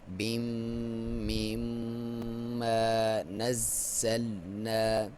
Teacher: میم مشدد پہ غنہ کیا جاتا ہے، ناک میں سے آواز نکالیں گے